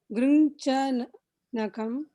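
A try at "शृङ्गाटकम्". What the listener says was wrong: Grinja, not Nagam. It's not Nagam. The word is, the letter is Ka, not Ga. Grinjanakam.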